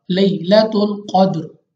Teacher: कौफ फिर मुस्तालिया में से मोटा करके पढ़ेंगे, मुंह और आवाज़ को खोल कर। दाल कलकला में से है, हमने इसको दोबारा पढ़ना है, यानी 2 बार।